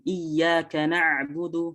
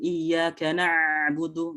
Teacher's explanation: ain ini masuk ke tawasud atau bainiyah, yang mana di situ aliran suaranya nggak boleh terlalu los gitu ya, nggak boleh terlalu sempurna gitu, karena dia berada di tengah-tengah.